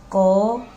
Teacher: कंठ से हमारा उच्चारण शुरू होता है